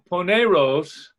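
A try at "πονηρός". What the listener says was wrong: Pa. It's a omicron. It's not a big O, so it's paneros.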